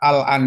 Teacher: huruf sukun ketemu hamzah khususnya pada kata al-an di situ adalah dibacanya dengan izhar. Ya, lamnya dibaca izhar, tidak diidgham ke dalam apa namanya lam itu ke dalam huruf hamzah an.